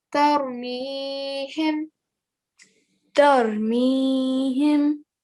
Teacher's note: we have to elongate it for 2 seconds, because this is a ya mad now.